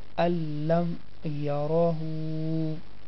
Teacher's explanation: the sound of noon will disappear completely.